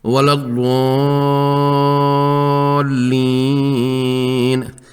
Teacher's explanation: مد لازم اور مد عارض کو 6 حرکات تک کھینچا ہے